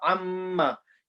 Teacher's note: You can see my both lips joining, but then there's a sound in my nose as well. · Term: gunna